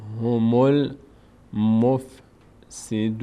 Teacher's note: الف خونده نمیشه در این گام وصل، میم ضمش میچسبه به لام